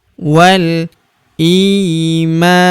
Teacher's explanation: Huruf i kita panjangkan dua harakat karena terdapat ya sukun di depannya yang ini.